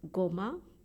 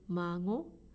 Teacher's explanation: if it's goma, it starts with go, but when we say mango, go becomes ngo.